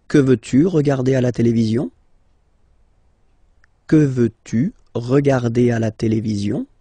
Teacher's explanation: you can hear that I've been raising a little bit my voice at the end